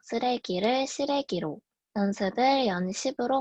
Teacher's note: 전설모음화입니다. 강원도와 전라도에서 일어나며 쓰레기를 시래기로, 연습을 연십으로 발음합니다